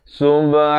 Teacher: ha pedas makhrajnya di pertengahan kerongkong.